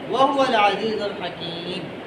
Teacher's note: वक्फ करने की सूरत में मीम को साकिन करते हैं